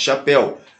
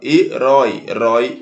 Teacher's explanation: a última sílaba mais forte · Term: oxítonas